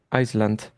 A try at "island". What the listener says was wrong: Island. Without pronounce the S. Island. Island.